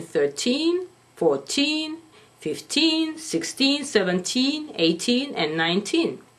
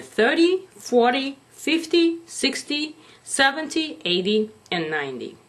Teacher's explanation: Step number 1, enunciate, which means pronounce these words very distinctly. Make sure you stress the second syllable in 13, 14, 15, 16, 17, 18, and 19. And first syllable in 30, 40, 50, 60, 70, 80, and 90. Then clarify and say 1-3 for 13 or 3-0 for 30 to help to visualize the number.